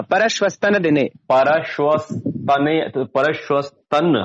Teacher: वो जो विसर्ग था उसका आधा सा बन गया, बिल्कुल विसर्ग को सा हो जाता